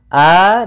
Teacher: Hamzah itu berarti kita keluarkan dari pangkal tenggorokan kita ketika kita melafalkannya. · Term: huruf hamzah